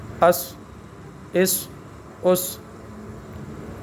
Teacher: صاد کو مشدد بنانے کی صورت میں اس، مشدد حرف کو سختی کے ساتھ پکڑیں گے، ایک ہی ہے۔ اس، اس، اس، سیڑھی کی آواز بھی ساتھ ساتھ اور حرف بھی موٹا ہو۔